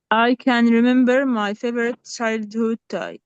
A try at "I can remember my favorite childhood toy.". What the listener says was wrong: Okay, I can remember my favorite childhood toy. Take care of the vowel of can here. It's not long vowel. I can, and it's not I can. Okay, take care here. I can remember my favorite childhood toy.